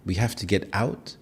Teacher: Northern Irish English has a musical singong quality with noticeable pitch changes. You have rising intonation which is very common even in statements.